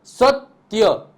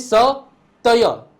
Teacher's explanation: સ અને ત ભેગું આવે છે અને ય અલગ આવે છે ધ્યાનથી સમજજો સત્ય ઓકે સત્ય એવું બોલાય છે સ તય એવું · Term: થડકો